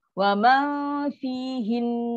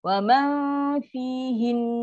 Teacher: Nun tu, dia hujung kena maintain dengung. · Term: wajibul gunnah